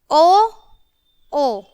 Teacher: इनका होगा स्थान कंठ ओष्ठ कंठोष् ठीक है और इनका जो वर्ण का नाम होगा कंठोष्ठीय व हलंत।